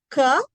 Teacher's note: When I'm saying k, I'm producing it with the back of my tongue.